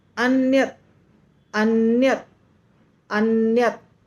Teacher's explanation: अन्यत में जो त होता है ना वह लास्ट में जो त है वह आधा है हलंत हलंत का मतलब आधा हलंत दिया हुआ तो उसका त पूरा सुनाई नहीं देना चाहिए